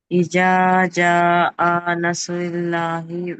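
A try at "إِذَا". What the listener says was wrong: అక్షరాన్ని మీరు పలకటంలో తప్పు చేస్తున్నారు ఇజా కాదు ఇజ దాల్ దాల్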